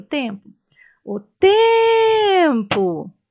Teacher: qual sílaba eu falei com mais intensidade? O tempo, a sílaba tem. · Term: sílaba tônica